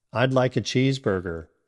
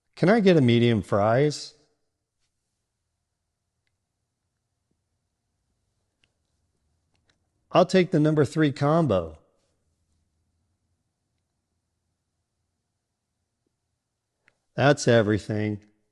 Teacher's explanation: Do you hear how your voice naturally drops at the end of each sentence? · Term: falling intonation